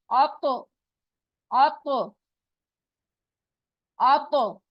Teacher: जबान की नोक ऊपर के दो दांतो के जड़ से लगाएंगे और जबान को पीछे से उठाएंगे तो यह द होगा और इस पे आवाज बाउंस बैक होगी